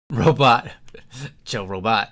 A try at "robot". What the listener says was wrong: Robot. it's not right. robot. Make sure you put the emphasis on the correct syllable.